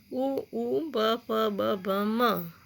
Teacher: ओष्ठ से, हमारे होठों से बोले जाते हैं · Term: ओष्ठ्य